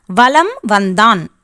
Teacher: வலம் வந்தான் என்பதில் மகர மெய்யெழுத்தை அடுத்து வகர எழுத்து வருவதால் மகர மெய்யானது தனக்குரிய அரை மாத்திரை அளவிலிருந்து குறைந்து 1/4 மாத்திரை அளவில் ஒலிக்கும் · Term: மகர குறுக்கம்